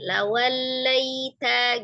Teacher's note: sifat huruf lam itu dia tawasud tengah-tengah